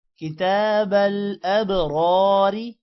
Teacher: را موٹا ہوگا اور را کے بعد الف ہے تھوڑا سا لمبا کریں گے